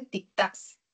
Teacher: tic-tacs es una palabra aguda, tiene la mayor fuerza de voz en la última sílaba, pero termina en doble consonante, o sea, termina en la C y seguido de la S.